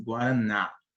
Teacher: a sílaba tônica da palavra guaraná é a última porque é onde você dá mais ênfase